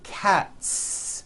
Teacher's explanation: Again, the s ending is unvoiced.